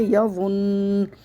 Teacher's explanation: وقفی صورت میں نون کا زبر حذف ہو جائے گا ، نون مشدد کو غنّے کے ساتھ پڑھیں گے، یا ون۔